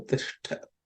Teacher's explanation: So it's the second letter in the ta varga, so it has to be aspirated.